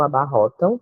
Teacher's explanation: em relação às outras vogais então a gente pode dizer que é decrescente e é nasal porque faz o som sair pelo nariz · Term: ditongo nasal